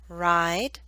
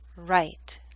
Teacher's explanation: should be longer because the D is a voiced consonant